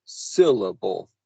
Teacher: the first syllable of syllable, is stressed.